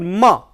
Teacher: lower lip and upper lip, but when they touch, the air passes out through the nose. So, that is a nasal sound.